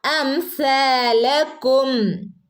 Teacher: പല്ലിന്റെ ഇടയിലൂടെ കാറ്റ് പോകുന്ന രൂപത്തിൽ ആയിരിക്കണം സിനെ ഉച്ചരിക്കേണ്ടത്